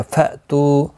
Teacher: हमज़ा साकिन को झटके के साथ अदा करेंगे। तू वाउ मद्दा है, 1 अलिफ की मिक़दार के बराबर खींच कर पढ़ेंगे।